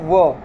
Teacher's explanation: व चा उच्चार करताना दात आणि ओठ या दोन्ही भागांना स्पर्श होते म्हणून हे दंतोष्ट मध्ये समावेश झालेला आहे. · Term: दंत्योष्ठ्यमध्ये